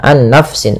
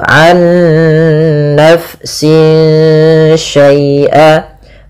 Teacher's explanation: Nah, ada bacaan idgham bi gunnah, yang dimana dia di sini kita harus membacanya nunnya masukkan ke nun kedua dan disertai dengan gunnah. Nah, kesalahan yang terjadi tidak menahan gunnahnya, an nafsin langsung, tapi benar ditahan dulu, an nafsin syai'a.